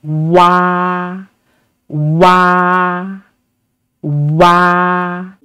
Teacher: when producing w we need to say o first and then quickly Glide to say ah make sure ah is pronounced longer and louder than the ooh final so w w w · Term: compound finals